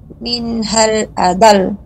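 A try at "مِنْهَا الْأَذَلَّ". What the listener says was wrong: Nah, agak lebih panjangkan lamnya karena tasydid. Minhal azal.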